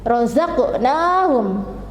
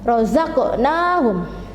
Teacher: Kemudian razaqnahum, jadi di sini ada fathah yang diikuti oleh alif, maka membacanya 2 ketukan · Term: mat tabi'i